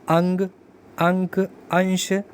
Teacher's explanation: अनुस्वर जो होते हैं इनके उच्चारण में नाक से अधिक सांस निकलती है और मुख से कम, जैसे अंग, अंक, अंश।